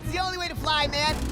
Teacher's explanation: Notice that the preposition to gets reduced to a r sound. The vowel o sounds like a schwa, and then the t is pronounced as a flap t.